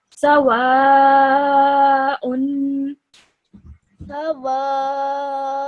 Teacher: This hamza with a double dhamma on top of it, pronounced this normally you would say as un, but because this has this is as tanween, so you would hold that noon sound in your nose for 2 seconds